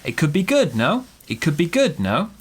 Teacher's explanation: at the end we're gonna go no no down up intonation because like a question